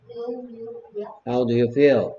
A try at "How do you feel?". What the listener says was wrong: How do you feel? 여기 턱이 이렇게 받쳐져 있으면 발음이 잘안될것 같아.